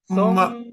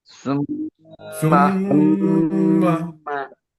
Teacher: গুণনাও কিন্তু 2 হারাকা পরিমাণ গুণনা করতে হয়।